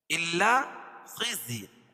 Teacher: خا کو پر پڑھیں گے کیونکہ حروف مستعلیہ میں سے ہے, اور تنوین کے بعد اخفاء کے 15 حرفوں میں سے فا ہے تو یہاں ناک میں آواز کو چھپا کر پڑھیں گے, یہاں اخفاء حقیقی ہوگا.